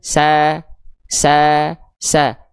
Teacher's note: terdengar vokal a kan sa sa sa e vokal a-nya tidak terhalangi oleh pangkal lidah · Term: huruf sin